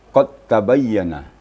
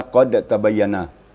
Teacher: Idgham mutaqaribain, ya. Maksudnya diidgamkan dal kepada ta, atau dimasukkan dal ke dalam ta sehingganya kedengaran hanya tasdid ta saja.